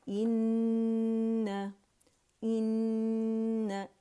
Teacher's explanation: ई sound आएगी अक़सुल हल्क से